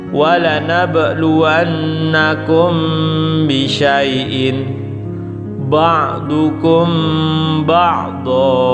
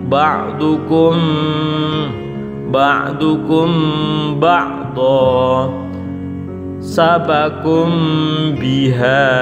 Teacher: Agak didengungkan, tahan, mim sukun bertemu dengan ba. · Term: ikhfa syafawi